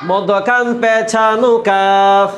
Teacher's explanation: জিহ্বার গুড়া থেকে একটু আগে বাড়ায়া তার বরাবর উপরে তালুর সঙ্গে লাগায়া মধ্যখান পেছানো কাফ